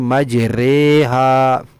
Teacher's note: وہ ہے مجریہا، نہ تو مجراہا پڑھتے ہیں نہ مجریہا پڑھتے ہیں، مجراہا بھی نہیں مجریہا بھی نہیں، بلکہ مجریہا۔ یہ ایک جگہ ہے قرآن پاک میں امالہ، اس کی را کو باریک پڑھنا ہے، اس کو مجرے نہیں پڑھنا، مجریہا باریک پڑھنا ہے اس کو۔